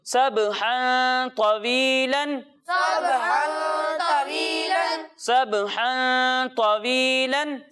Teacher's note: تنوین ہے اور اس کے بعد طا آ رہا ہے تو یہاں بھی اخفا ہوگا اور یہاں بھی ہم اسے گنہ کر کے پڑھیں گے